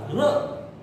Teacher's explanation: और जब आप र बोलेंगे, र, तो र बोलेंगे तो आपके दांतों के ऊपर जीभ लगेगी और उसमें से आवाज आएगी। आपको ऐसे लगेगा र जो है वो कुछ कंपित हो रहा है, र। 2 बार 3 बार लगता है, यहां पर रा बोला जाता है।